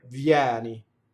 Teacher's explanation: Notice that the first I vowel is a semivowel, right? Vieni.